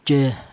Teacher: Jadi cara bacanya jah yaitu jelas bahwa ini keluarnya huruf berasal dari pangkal tenggorokan atau tenggorokan bagian bawah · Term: izhar halqi